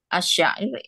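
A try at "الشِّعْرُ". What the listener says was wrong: Nah, tapi bacanya jangan syair ya. Kalau bahasa Arab itu di kasrah. Syi', asyi'ru. Kalau dia fathah, asy'aru itu rambut.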